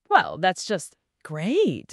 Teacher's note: il y a cette intonation un peu en vague ou montant-descendante. On l'utilise pour les listes, pour nuancer, pour l'ironie, le sarcasme aussi.